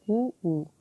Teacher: ఊ ఓస్ట్, మన పెదాలు రౌండ్గా అవుతుంది